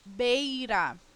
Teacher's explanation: você tem em uma mesma sílaba o encontro de uma vogal e de uma semivogal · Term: ditongo